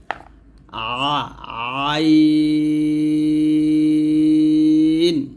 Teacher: আইন কন্ঠনালীর মধ্যখান থেকে উচ্চারণ করতে হবে আইনটা অবশ্যই চাপ দিতে হবে এখানে চাপ দিয়ে অথবা চিকন করে